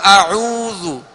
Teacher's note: آگے واو مدہ ہے، اس کو دراز کریں گے اور کامل ہونٹ گول رہیں گے۔ اسی طرح ذال پر پیش ہے، جو ذال پر جو پیش ہے وہ ایک پیش ہے، اس کو دراز نہیں کریں گے بلکہ اس کو بغیر کھینچے بغیر جھٹکا دیے معروف پڑھیں گے۔